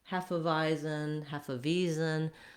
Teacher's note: It has first syllable stress